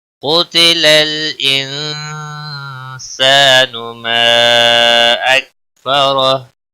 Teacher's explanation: ما اکفرہ مد منفصل ہے، تین الف کے برابر کھینچ کر پڑھیں گے